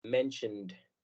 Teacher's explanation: Pero cuando lo queremos cambiar al pasado, agregamos una ED que no suena completo, sino únicamente se pronuncia la D